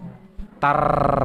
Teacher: Kalau ra-nya sakinah itu tetap harus ada getarnya. Ya, tetap ada getar. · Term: ra sakinah